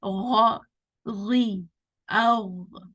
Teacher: So here the sound is heavy coming from the upper throat.